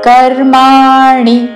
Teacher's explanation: రాణిలో పలికే అణి హ్రస్వము. కర్మాణి అని దీర్ఘము పలకకూడదు.